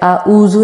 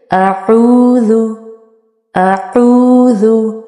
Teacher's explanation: आइन और अलिफ की आवाज़ सिमिलर नहीं होनी चाहिए।